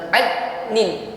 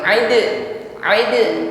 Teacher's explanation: Dal sukun sifatnya Qalqalah ya pantulkan jangan tertahan